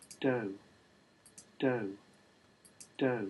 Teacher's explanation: It's the word do, and you can hear that it's got falling intonation. If you look a bit more closely at the F0 trace in this window, what you can see is that in the first part there's actually quite a rapid drop. · the first few glottal pulses are quite high, quite a lot higher than the ones that come straight after.